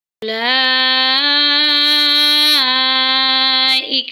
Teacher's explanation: وبالآخرۃ ہم یوقنون، اولئک علی ھدی من ربہم، اولا میں دیکھیں مد متصل ہے، اس کو ہم 4 سیکنڈ تک لمبا کریں گے، 4 سے 5 الف کے برابر